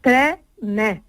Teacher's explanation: todos lo hemos escuchado y es un fenómeno precioso que técnicamente se llama metafonía, que incluso la primera vocal, la de tre, se abre también y se dice tre-ne.